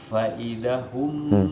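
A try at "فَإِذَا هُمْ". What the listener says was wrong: Faida. Nah, fa-nya pendek.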